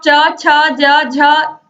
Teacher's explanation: जब जीभ से आप च छ ज झ बोलोगे तो आप देखोगे कि जीभ तालु से लगती है